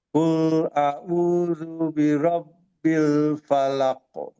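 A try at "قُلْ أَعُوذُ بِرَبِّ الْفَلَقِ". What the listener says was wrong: Ya, lamnya masih tebal ya. Kul, kul, kul, eh. Kul, kul. Coba antum baca la. Nah, jadi posisi bibirnya nanti seperti la. La. Kul, kul.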